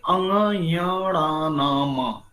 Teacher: ये पांचों लास्ट वाला अक्षर नेजल साउंड से, यानी कि नाक से उत्पत्ति होने वाला , इसका आवाज नाक बंद करेंगे तो आवाज नहीं आएगा इसका,